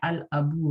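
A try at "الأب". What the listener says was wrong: تشدید نہ آنے دیں, تشدید نہ آنے دیں, تشدید کی آواز آتی ہے.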